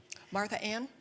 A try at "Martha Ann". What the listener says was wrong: No, you just said Martha.